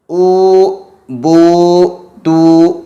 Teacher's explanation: क्या होगा, जौफे शफतैन, दोनों होंठों के खाली हिस्सा। जो दोनों होंठ का खाली हिस्सा है वहाँ से व मद्दा अदा होगा। जैसे ऊ, बू, तू वगैरह जितने भी व मद्दा जहाँ जहाँ आएंगे, दोनों होठों के जौफ़े शफ़तैन यानी दोनों होठों का खाली हिस्से से व मद्दा अदा होगा।